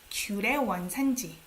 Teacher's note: You don't pronounce it as 의. It's 에.